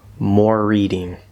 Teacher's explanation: this connects we get a slightly longer r sound going from the r colored o or into that r consonant